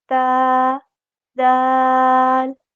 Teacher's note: تا اور دال یہ دونوں باریک پڑھے جاتے ہیں